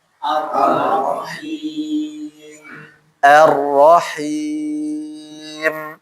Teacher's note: Jadi ro saja di sini dan juga arrahimnya jangan sampai ada ghunah